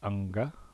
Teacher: had phonological values so ng would have been pronounced unga right both the velar nasal and then the stop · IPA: [ŋg]